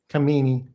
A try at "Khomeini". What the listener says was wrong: No, you don't pronounce the K. So it's hominy. Like hominy grits. Hominy. Hominy.